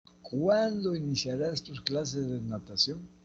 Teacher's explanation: Acá encontramos un pronombre interrogativo. Este es interrogativa directa parcial o interrogativa pronominal. Tiene entonación descendente.